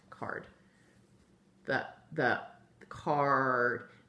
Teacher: The A is being controlled by that R and making card. You don't really even hear the A in there.